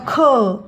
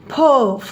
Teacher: ज्याचा उच्चार करताना आपण त्याच्यामध्ये ह उच्चार ऍड होतो त्याला आपण महाप्राण म्हणतो म्हणजे आता ख म्हणल्यावर ह येत शेवटी फ म्हणल्यावर ह येत